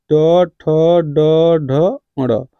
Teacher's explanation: इसका टवर्ग का उच्चारण किससे हो गया? मूर्धा